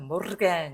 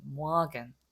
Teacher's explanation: 이 에르가 단어 중간에 들어가 있으면 아 발음 비슷하게 하면 오히려 가깝다